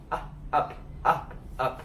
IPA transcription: ʌ